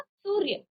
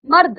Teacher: रॉ पहले आया, वो भी आधा रॉ का उच्चारण आया, पूरे रॉ का नहीं, स्वर रहित है ये, स्वर के साथ नहीं है, ठीक है ना।